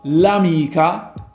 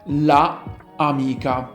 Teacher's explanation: because you don't have to repeat the vowel a, it has better musicality. It is easier to pronounce and the two words can be chained together with a fluid and smooth pronunciation. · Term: elided form